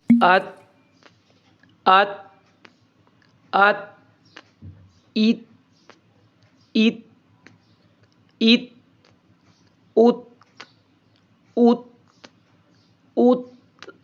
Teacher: क्योंकि इसमें हमस भी मौजूद है इसलिए मखरज से थोड़ा सा सांस जारी होगा और उसमें कमजोर सी आवाज निकलेगी